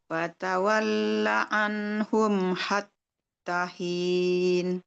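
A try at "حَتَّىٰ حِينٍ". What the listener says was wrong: panjang. Hatta hin, panjang.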